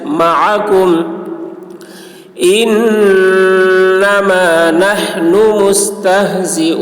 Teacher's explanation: इन्नमा नहनु, हा हलक से अदा करेंगे